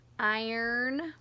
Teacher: when we say i our mouth is open er our mouth closes slightly and our lips round and get pushed forward